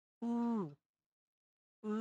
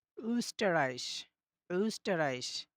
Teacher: সেটা হচ্ছে যে এটা উচ্চারণ ঠিক এরকম হবে যে আপনি যখন এটা উচ্চারণ করবেন আপনার ২ টা ঠোঁট তখন গোল হয়ে যাবে। উ, উ এরকম হবে আরকি। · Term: umlaut